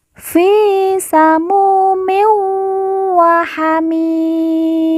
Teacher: min bertemu dengan huruf wawu, maka tanwin dileburkan langsung masuk huruf wawu, kemudian ditekan, ditahan 2 harokat dan didengungkan.